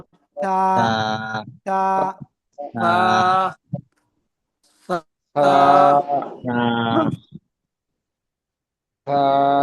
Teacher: জিহ্বার আগা সামনের উপরে দুই দাঁতের আগায় লাগে